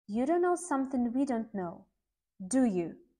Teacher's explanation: if we're confident in what we are saying and we know that the listener will confirm it the intonation goes down